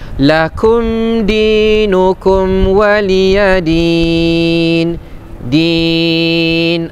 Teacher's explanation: Ah kan panjang tu. Kenapa panjang? Kerana hukumnya mad arid lisukun. Ya. Ah ketika kita wakaf ada ketika wakaf huruf yang kedua terakhir adalah huruf ya dan sebelumnya berbaris bawah.